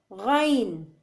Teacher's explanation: غین کو ادنی حلق سے ادا کرنا پڑتا ہے